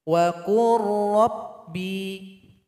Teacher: qaf ini langsung diloncatkan kepada huruf ra karena lam telah bergabung dengan ra di sini